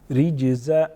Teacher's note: جیم again حروف قلقلہ میں سے ہیں، قلقلہ کریں گے